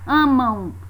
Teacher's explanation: É como se no final da palavra tivesse a semivogal U.